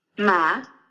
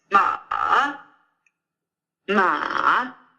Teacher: you just have to make sure to really dig downward with the third tone